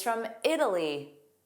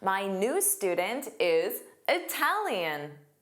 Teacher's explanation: This is because the vowel after Italy It's unstressed. But the vowel after Italian is stressed.